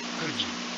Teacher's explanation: We blend the d sound in could and the y sound in you to make the sound j. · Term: Blending of sounds